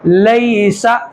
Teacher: اب یہاں پہ یا ساکن ہے، یا ساکن کو لام کے ساتھ ملائیں گے، لیکن چونکہ یہاں پہ یا ساکن سے پہلے والے حرف کے اوپر زبر آ رہا ہے تو اس لیے یا لین ہوگی. اس کو جلدی سے ادا کر کے پڑھیں گے نرمی کے ساتھ. لیسا، یہاں پہ آواز نہیں روکیں گے ہم.